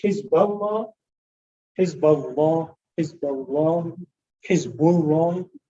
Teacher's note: letter before Allah has a Dhamma or a Fatha, like Hizballah, Hizballah, Hizballah, Hizbullah, the word Allah must be heavy